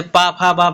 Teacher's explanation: जो ओट से बोलते हैं जैसे पा फ ब बोलेंगे तो आपका ओट सट जाएगा तो इसी को हम बोलते हैं यानी ओस्ट व्यंजन हिंदी में